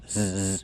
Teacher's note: the last S is also the zebra sound. Zzz. Make the voice. These are scissors.